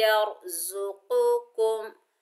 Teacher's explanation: कौफ हरूफ इस्ताला में से है, हरूफ इस्ताला मोटे पढ़े जाते हैं, चाहे इनके ऊपर जबर जेर पेश कुछ हो या ना हो, लेकिन ये हर हालत में मोटे ही पढ़े जाते हैं। काफ के ऊपर पेश आगे मीम साकिन है, काफ को मीम से मिलाएंगे, मीम साकिन का इजहार होगा क्योंकि 29 हरूफ हिज्जा में से बा और मीम के अलावा जो भी हर्फ आ जाए तो मीम का इजहार किया जाता है।